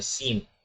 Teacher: نون جب میم سے ملے گا تو نون کی جگہ میم کی آواز نکلے گی، یعنی سین نہیں بولیں گے بلکہ سیم جو ہے وہ اس کی آواز میم کے ساتھ مل کر آئے گی، سیم پڑا جائے گا، یعنی آخر میں میم کی آواز آئے گی، نون کی آواز نہیں آئے گی۔